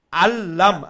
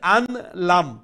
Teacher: নুন তো আমরা লামর ভিতরে ঢুকে গেছে না নুনের আর সাউন্ড হইতো না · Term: ইদগাম বিলা গুন্নার